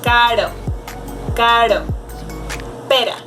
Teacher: the tip of my tongue just touches a little bit my teeth, so it is a soft movement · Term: simple vibrant ere